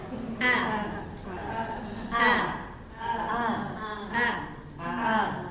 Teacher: kalau Hamzah itu keluarnya dari tenggorokan bawah. Ya, kita ee nanti peserta suruh merasakan merasakan A harus ditekan.